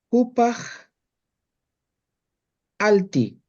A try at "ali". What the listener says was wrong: ¿De dónde te sacó la T? claro, porque dice alti. ¿De dónde te has sacado la T? Si solamente termina en I. la T? inventar nada.